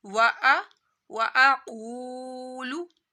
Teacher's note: दो नुक्तों वाला काफ है, इसको मोटा पड़ा जाता है